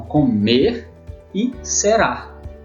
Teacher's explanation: nós temos a sílaba tônica na última sílaba